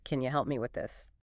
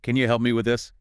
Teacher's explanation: And the breakdown, can you, often reduces to the weaker form, can ya. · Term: the reduced ya